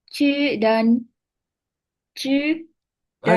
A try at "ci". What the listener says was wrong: Jangan ci-nya yang jelas saja. Ci, bukan cu. Ci.